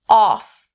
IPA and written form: ɔːf (off)